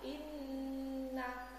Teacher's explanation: bacaan gunnah nun bertasdid dan mim bertasdid dari rongga hidung keluar